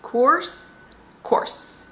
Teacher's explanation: But as an American, I would say course. You get through the vowel very quickly, and you spend more time on the S sound.